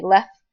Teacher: I usually tend not to pronounce the T in left I just say left and that reminds me that the right